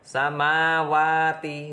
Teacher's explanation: mat tabi'i karena fathah bertemu alif, panjangnya 2 harokat.